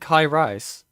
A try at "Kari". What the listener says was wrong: That's not how you pronounce that. Karias. No, it's literally Ka and then Riaz. Or Riaz. One of those two. But it's not Rise.